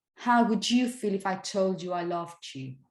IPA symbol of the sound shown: dʒ